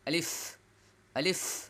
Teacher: এক নাম্বার হচ্ছে দুই ঠোঁট লাগবে না। দুই ঠোঁট লাগবে না। আর দুই নাম্বার হচ্ছে লম্বাও হবে না।